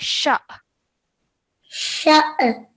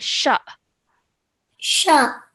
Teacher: we have to produce a slight jerk sound when we join the sheen to the hamza, to the alif sakin · Not an ayn sound, but just a soft jerk.